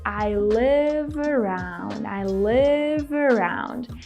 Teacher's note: So first of all, we combine live around, right? We don't pause.